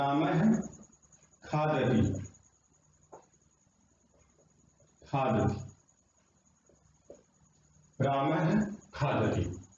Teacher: और विसर्ग में जैसे विसर्ग आधा ही बोलते हैं आगे खे पे चले जाते हैं, विसर्ग आधा ही बोलते हैं आगे खे का उच्चारण करने के लिए पहुंच जाते हैं हमारे जो प्रयत्न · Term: जिह्वा मूली